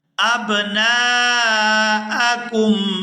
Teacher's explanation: یہاں نون کو الف مدہ کی وجہ سے کھینچ کر ادا کیا جائے گا۔